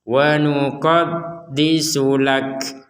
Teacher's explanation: Makanya kalau didengarkan itu tidak murni K seperti huruf K dalam bahasa Indonesia, tapi ada unsur, ada nafasnya yang keluar dari mulut kita. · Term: huruf kaf